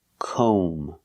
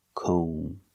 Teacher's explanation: sound like no and go we pronounce this word com o make the long o sound com and remember the B is silent don't pronounce the B comb so comb is the noun it's